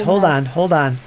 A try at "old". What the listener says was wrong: You just said a word that has that the way you speak. You say ode. You say ode. That's one of the words. old, pronouncing the L, you say ode. There's a few other words where you do that. That's from the north. Yep, that's from the north.